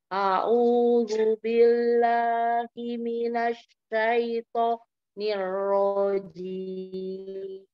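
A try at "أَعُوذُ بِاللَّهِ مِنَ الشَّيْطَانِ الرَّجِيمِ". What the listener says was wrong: Coba dikuncinya di shin karena shinnya makhrajnya masih belum ketemu, jadi ke huruf selanjutnya. Sekarang makhraj jim, kita cari makhraj ya dulu. Kan satu makhraj jim, huruf jim, jim, shin, ya. Jadi tidak tidak dengan memajukan bibir.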